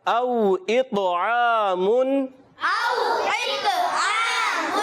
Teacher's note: او حروف لین ہے، واو لین، واو ساکن سے پہلے زبر آ گیا، واو لین بن گیا، نرمی سے ادا کریں گے · طا کی ادائیگی حروف مستعلیہ یعنی موٹے حروف میں سے اور ایکسٹرا موٹے میں سے، یعنی بہت زیادہ موٹا کریں گے